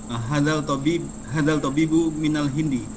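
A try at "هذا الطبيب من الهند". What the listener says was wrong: Bukan hadal. Hadzat tabibu. Dia alif lamnya syamsiah ya.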